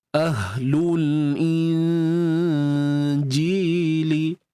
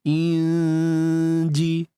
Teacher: Nun mati bertemu jim, ini huruf nun dan bawah ni adalah huruf jim. Nun mati bertemu jim, ikhfa haqiqi, dengung yang nipis saja.